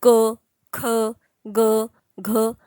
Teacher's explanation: त्यांच उच्चारण जे आहे ते कंठातून केलं जातं · म्हणजेच क, ख ज्यावेळेस आपण बोलतो, हे 5 लेटर जेव्हा जेव्हा आपण बोलतो त्यावेळेस आपल्याला लक्षात येईल आपला प्रॉपर जो घसा असतो ना, आपण तिथून प्रोनाऊन्सिएशन करतो, ना जिभेद्वारे ना ओठांद्वारे. तर आपण कुठून प्रोनाऊन्सिएशन करतोय, तर गळ्यातनं प्रोनाऊन्सिएशन करतो याचं.